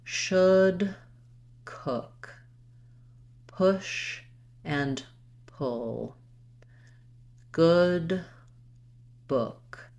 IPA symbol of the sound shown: ʊ